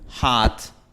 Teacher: Esta vocal se pronuncia con la lengua atrás. La lengua está baja. Recordemos que hacia abajo del gráfico significa que la lengua está baja. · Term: a the father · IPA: /ɑ/